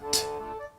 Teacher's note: apoyando la punta de la lengua en el inicio, en el final de los dientes, en la raíz de los dientes.